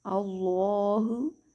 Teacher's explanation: اللہ، کلمہ جلالت کی لام سے پہلے اگر زبر آ جائے تو اس لام کو ہم پر ادا کرتے ہیں۔ لام کے اوپر کھڑا زبر ہے تو ایک الف لمبا کر کے ادا کریں گے